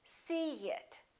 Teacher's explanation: see it here's a vowel e and here's another vowel it in this case we put a little Y a little you sound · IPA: /i/